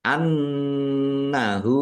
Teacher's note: nun tasdid bacaan ghunah dibaca mendengung. Ditahan biar tampak mendengung.